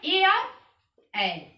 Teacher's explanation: कंठोष्ठ है ओ और औ